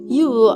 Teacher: U is a high back rounded vowel